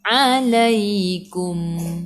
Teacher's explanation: Sebelum ya baris atas kena baca lembut bacaan lin.